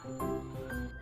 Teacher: organ yang saling berkontribusi di gigi atas adalah bibir bawah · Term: huruf fa